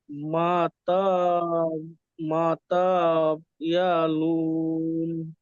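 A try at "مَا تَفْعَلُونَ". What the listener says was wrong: মা তাফ ইয়ালুন নয়, মা তাফ আলুন। তাফ বলে, এখানে তাকে টান দিলেন, তায়ের উপরে কি আছে ভাই? জাবার না, হারাকাত। পড়াকে তাড়াতাড়ি পড়তে হবে। তাফা জাবার তাফ, আইন জাবার আ, তাফ আ। লাম ওয়াও নুন পেশ,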